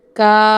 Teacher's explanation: ಈ ಇಳಿಯ ಸ್ವರ ಆ. ಈ ಆವನ್ನು 2 ಸೆಕೆಂಡ್ನಲ್ಲಿ ಎಳೆದು ಓದಬೇಕಾಗುತ್ತೆ. ಅಂದರೆ 2 ಮಾತ್ರಾ ಕಾಲದಲ್ಲಿ ಉಚ್ಚಾರಣೆ ಮಾಡಬೇಕಾಗುತ್ತದೆ. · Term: ದೀರ್ಘ ಸ್ವರ